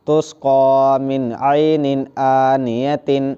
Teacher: نون ساکن کے بعد حروف حلقی کے 6 حرفوں میں سے عین ہے، اس لیے نون کی آواز کو ظاہر کر کے بلا گنہ کے جلد پڑھیں گے